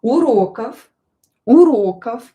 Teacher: This word here will be pronounced as f because voiced consonant at the end of the word will become unvoiced. So, v will become f unvoiced.